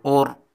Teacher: اس را کو پر پڑھیں گے کیونکہ را کے اوپر جزم ہے اور ان سے پہلے حرف پر پیش ہے